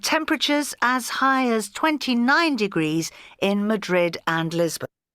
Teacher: She emphasized that number, as high as 29 degrees.